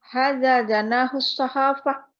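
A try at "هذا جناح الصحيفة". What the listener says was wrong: Intonasinya. Salah intonasinya itu.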